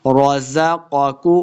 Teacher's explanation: پہلے قاف کو موٹا پڑھیں گے، دوسرے کو موٹا نہیں کرنا۔ رزقاکم اللہ لفظ اللہ کا لام بھی موٹا پڑھا جائے گا، کم اللہ بغیر وقف کے آگے ہم پڑھیں گے قال الذین کفروا للذین آمنوا انطعم قال الذین اس قاف کو موٹا پڑھیں گے، پہلے لام کو دوسرے لام مشدد کے ساتھ ملا کے پڑھنا ہے۔